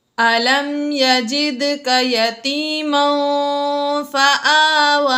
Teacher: یہاں پر دال حروف قلقلہ میں سے ہے، اس لیے ہم نے دال ساکن ہے، یہاں پر ہم نے قلقلہ خوب ظاہر کر کے پڑھا